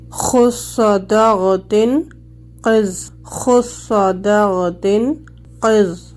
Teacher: استعلاء کے حروف ادا کرتے ہوئے آواز اوپر کے تالو کی طرف اٹھ جاتی ہے، اس کی وجہ سے یہ حروف موٹے ہو جاتے ہیں